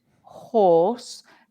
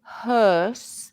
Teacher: for horse my lips are pointed horse and they're rounded but hearse they are a bit more Square